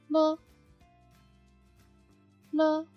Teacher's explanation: Let the air flow out from both sides of the tongue and vocal cords vibrate.